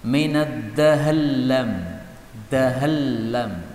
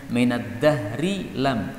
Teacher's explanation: saya membaca dengan idgham antara ra kepada lam. Minad dahallam, dahallam, roknya hilang, masuk pada lam.